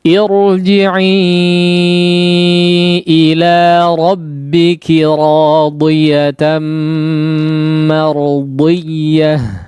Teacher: Ya, di sini huruf dodnya diperhatikan, pengucapan huruf dodnya disempurnakan, ya, artinya tidak menjadi tipis, ya, karena huruf dod adalah di antara huruf-huruf yang tebal, ya, bagaimanapun kondisinya dia akan tetap dibaca tebal sekalipun berharakat kasrah, ya, jangan sampai terdengar malah menjadi huruf seperti huruf dal, ya, seperti huruf dal atau huruf dod yang memang ditipiskan, ya, tetap dijaga dari segi ketebalannya.